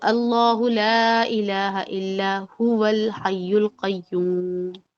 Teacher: اب یہاں پر میں نے وقف جائز کا جو جیم ہے اس کو میں نے اس کو یوٹیلائز نہیں کیا، اور میں نے هو الحی القیوم پر فوکس کیا، میں نے واو کو ملا دیا